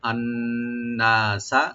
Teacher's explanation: নুন মুসাদ্দাদ যেখানে আছে এখানে আমরা এখানে ওয়াজিব গুণনা, একালিপ গুণনা করব